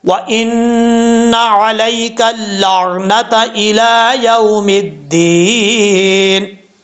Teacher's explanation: نون مشدد ہے، غنہ کریں گے 1 الف کی مقدار